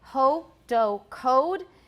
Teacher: in american english it's close to o but it is a diphthong it's not just o